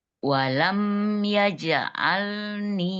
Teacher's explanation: Yajalni ninya mad ya dua harakat panjang.